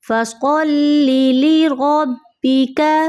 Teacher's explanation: صاد کو آپ نے موٹا کرنا ہے تاکہ سین، سا اور صاد کی آواز میں آپ فرق کریں